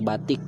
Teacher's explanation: direlasikan seperti bunyi huruf I besar, kapital, apabila berada pada silabil tertutup atau silabil berkoda, seperti pada kata batik.